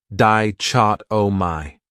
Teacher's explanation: This word has 4 syllables, and the stress is on that second syllable, dichotomy. That third syllable has that schwa